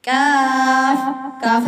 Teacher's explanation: کاف سخت تالو سے، یعنی قاف کے مخرج سے ذرا نیچے، موٹے قاف کے مخرج سے ذرا نیچے سے باریک کاف نکلتا ہے، اور موٹا قاف بھی چیک کر لیں، نرم تالو سے نکلتا ہے۔